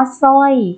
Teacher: คำว่าสร้อยก็ออกเสียงเฉพาะเสาร์เสือนะคะ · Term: คำควบกล้ำไม่แท้